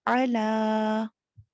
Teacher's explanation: लाम खड़ी जबर ला, 2 ये अलिफ मद्दा के कायम मकाम है, इसको 2 काउंट्स लंबा पढ़ेंगे।